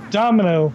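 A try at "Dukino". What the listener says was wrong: It's not Domino, there's no M. And there's a U.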